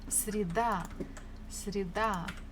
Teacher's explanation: Stress falls on A.